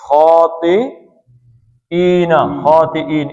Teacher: 2 حرکتیں تھیں لیکن عارضی طور پہ سکون ہو گیا تو اس کو آپ 5 حرکتیں کھینچیں گے